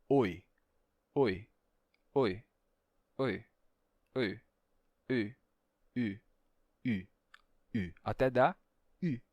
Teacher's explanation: um i, só que com os lábios arredondados da primeira vogal, dando u